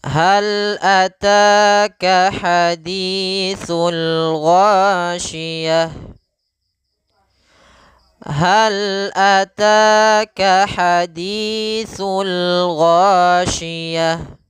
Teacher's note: pada lafal hal ataka ta kita panjangkan 2 harakat karena di sini ada mad tabi'i, yaitu adanya fathah bertemu dengan alif.